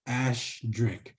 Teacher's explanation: A lot of us Crees don't have that strong sh sound. Sometimes it comes out as ash drink. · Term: Cree accent